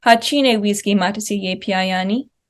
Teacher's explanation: we have an intense spike at the beginning right after that question marker. So that ha is our question marker.